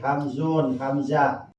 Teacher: Ari makhrajna hamzah di mana boga sing tikoro nyanding kana dada. Kulantaran hamzah eta ayana di tikoro, makhrajna di tikoro disebut huruf halak.